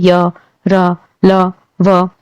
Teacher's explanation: इनका उच्चारण करते वक्त क्या होता है, आपकी जो श्वास होती है, आपकी जो श्वास होती है वो मुंह के थ्रू, यानी कि जो मुख होता है उसके थ्रू अंदर रुकती है, फिर एकदम से बाहर निकलती है, और ये किसी भी ऑर्गन को आपको टच नहीं करेगी। आप जब इनको बोलेंगे ना तो जीभ कहीं भी टच नहीं होती है। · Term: अंतस्थ व्यंजन